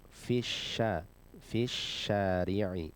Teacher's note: harfu syin ini termasuk huruf yang ada di lidah bagian tengah ya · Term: harfu shin